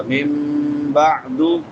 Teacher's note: عین وسط حلق سے، حلق کے درمیان سے